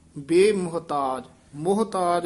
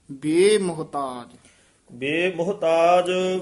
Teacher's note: ਬੇ ਮੁਹਤਾਜ ਇਕੱਠਾ ਹੀ ਪਾਠ ਹੈ ਥੋੜਾ ਜਿਹਾ ਲਮਕਾ ਕੇ ਬੋਲਣਾ